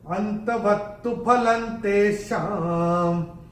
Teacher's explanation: पहले चरण में ल के ऊपर अनुस्वार के बाद का अक्षर है त, और अनुस्वार के बाद जब त आएगा तो अनुस्वार का उच्चारण होगा न